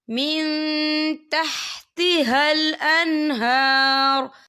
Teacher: اور آگے دیکھیے آپ کو چھوٹی سی جیم لکھی نظر آ رہی ہے، تو یہ پھر جائز کی علامت ہے، تو یہاں پہ ٹھہرنا بہتر ہے۔ وقف کی صورت میں را جو ہے ساکن ہو جائے گا